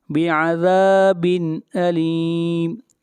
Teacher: یہاں پر تنوین کے بعد حروف حلقی میں سے حمزہ ہے، اس لیے اظہار ہوگا